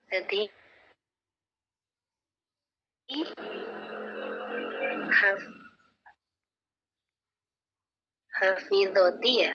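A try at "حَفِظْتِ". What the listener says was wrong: Hafidti, zo-nya sukun.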